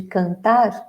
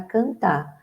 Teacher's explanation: é bastante comum sumir, né, tirarmos o R final do infinitivo